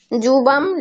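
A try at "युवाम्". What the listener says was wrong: জুবাম না, ইউবাম। জুবামটা ভুল উচ্চারণ, বাংলাতে করা হয় ইউবাম। ইউ ইউ আমরা ইংলিশে বলি না ইউ। হ্যাঁ, ইউ ইউ, ওই ইউটা ইউবাম।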